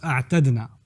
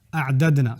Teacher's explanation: It's actually when you have idgham, أَعْدَدْنَا, it's more commonly pronounced أَعْتَدْنَا. It's just easier to pronounce أَعْتَدْنَا as opposed to saying أعددنا.